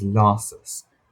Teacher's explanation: your final Ses are staying as the S sound and not becoming the Z sound just because that's what we do in English.